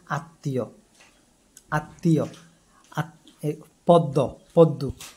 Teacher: আয়ের মতো হয়, যেমন শ্মশান, শ্মশান, স্মরণ, স্মরণ। শব্দের মধ্যে ম ফলা থাকলে সেই বর্ণ উচ্চারণে দ্বিত্ব হয় এবং সামান্য অনুনাসিক হয়